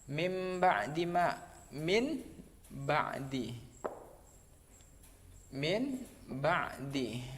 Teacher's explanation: nun mati bertemu dengan huruf ba, maka dibaca nunnya dibaca mim, mim ba'di. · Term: iqlab